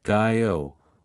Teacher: in Australian English, the word go might sound like guy-o, reflecting a wider range of diphthong movement